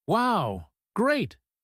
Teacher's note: delivered in that quiet, flat tone to an empty room while picking up the sponge, it is pure frustration